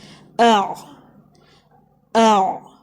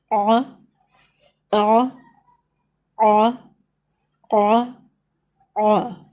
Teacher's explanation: آپ گلے کے درمیان کے حصے پر فنگر رکھیں، منہ سے ادا نہیں کریں گے، آ کی آواز نہیں آئے گی، بلکہ گلے سے آپ گلے کے درمیان کے حصے کو پریس کر کے گلے سے آواز نکالیں گے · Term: عین